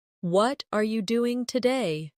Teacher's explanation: the stress usually falls on what and doing